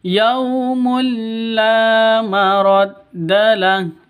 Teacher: La panjang 2 ketukan, ada alif diawali dengan fathah. Mad asli. Lahu ini disukunkan karena waqaf.